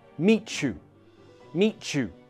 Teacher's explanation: When one word finishes in a t sound and the next word begins with a y sound, we connect them with a ch.